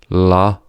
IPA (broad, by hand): l